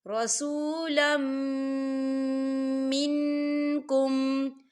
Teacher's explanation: رسولا منکم، منکم، یہاں دیکھیں نون ساکن ہے، نون ساکن کے بعد کاف آ رہا ہے، اور کاف جو ہے اکفا کا ورڈ ہے تو یہاں پر اکفا ہوگا، ہم نون ساکن کی آواز کو ناک میں چھپائیں گے۔